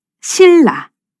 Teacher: 신의 끝소리가 뒤에 오는 유음을 만나 이 유음의 영향을 받아서 같은 위치에서 발음나는 유음으로 바뀌어서 실로 소리납니다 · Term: 유음화